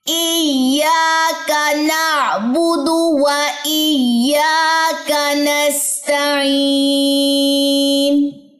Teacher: ایاکا یا لمبا ہوگا، کاف لمبا نہیں ہوگا